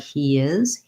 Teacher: If I'm saying something like he is and I link, it sounds like he is, that Y sound is there.